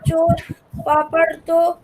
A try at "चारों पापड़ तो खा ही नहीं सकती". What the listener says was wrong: चोर नहीं, चोर नहीं है,